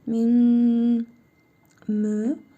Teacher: nun hərfini burnumuzda tələffüz edərək 1 əlif miqdarı uzadırıq və mim hərfini isə şəddəli tələffüz edirik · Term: İdğam-ı mə'al qunna